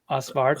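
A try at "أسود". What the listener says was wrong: Eswid. Yeah, Eswid. It's like if you were to take out the R and just pronounce.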